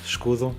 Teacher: The S basically in Escudo is more like a sh sound, like escudo.